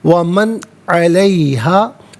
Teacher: نون ساکن ہو یا تنوین ہو سے اظہار کے ساتھ پڑھتے ہیں، اخفا یا غنہ نہیں کیا جاتا